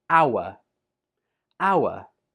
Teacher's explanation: this is a silent H, and this word is pronounced hour